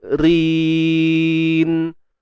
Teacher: Jadi ra tu nipis sebab baris bawah. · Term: Ri nipis